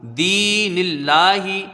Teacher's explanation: دال کو یا سے ملا کے پڑھیں گے، یا مدہ ہے یہاں پر، ایک الف کی مقدار رہے گی. نون کو لام سے ملائیں گے.